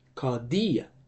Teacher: The accented syllable is the ultima, therefore the higher tone will be on the ultima. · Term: acute accent